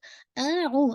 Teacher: اب آئین جو ہے نا یہ آپ کے مڈل آف تھروٹ سے نکل رہا ہے